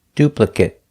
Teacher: pronounce it with a long a duplicate if it's a verb if it's not a verb we pronounce it with the short sound it it